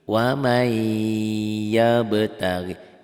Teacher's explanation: Wamai, n-nya hilang. N-nya ditelan sama y. Wamai yabtaghi. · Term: idgham bi gunnah